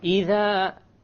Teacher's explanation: The dhal, my tongue is outside.